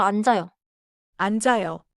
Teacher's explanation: 앉아요는 안자요처럼 이어서 발음하세요.